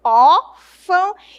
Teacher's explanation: Você vai sentir esse ar saindo aqui pelas narinas, né? Então nós temos um som nasal, ele sai tanto pela boca quanto pela narina · Eu uso aí as narinas também para trabalhar em favor desse som.